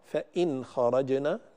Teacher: فإن خرجنا أيضا هذا خطأ، فإن خرجنا لا بد من إظهار النون عند الخاء دائما لأن الخاء من حروف الإظهار